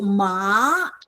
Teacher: you go from low to high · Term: second tone